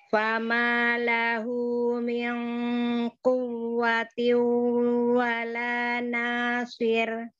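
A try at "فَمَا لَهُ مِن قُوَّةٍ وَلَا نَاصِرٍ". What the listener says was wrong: Ya, panjangkan lagi ya. Quwwati wala nasir. Panjangkan lagi. Nanya tipis ya. Nasir. Nasir. Tipiskan ro-nya, nasir. So-nya tebal tapi ro-nya tipis. Nasir. Wala nasir. Tipiskan, tipiskan. Nasir. Dari wala, dari wala, dari wala. Sir.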